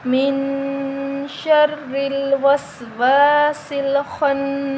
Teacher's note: خوا حروف مستعلیہ ہے، موٹا حروف ہے، نون مشدد ہے، اس پر غنہ کریں گے۔ نون کے آگے الف مدہ ہے تو اس کو ہم 1 الف کے برابر لمبا کر کے پڑھیں گے۔